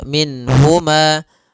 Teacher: Nun di sini harus jelas karena bertemu dengan huruf ha, maka tidak boleh ditahan. Misalnya ditambah dengan gunnah min huma, ini enggak boleh. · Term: izhar